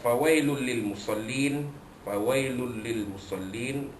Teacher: Fawailul lil musallin, lam 2 dapan nun bertemu dengan lam pada musallin, hukumnya idgham bila nak memasukkan bunyi tanwin ke dalam huruf lam tanpa dengung